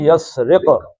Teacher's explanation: یسرق میں کیا ہے؟ قاف کا کلکلہ ہے